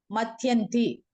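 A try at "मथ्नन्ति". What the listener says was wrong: Matnanti. There is no yakara, and I know it confuses because it looks like yakara, but it's thakara, because there is a vowel and there is a gap in the. Yeah, matnanti.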